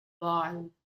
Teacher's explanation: You are just rolling over your tongue, touching the deep part of the palate. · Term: Sirapulla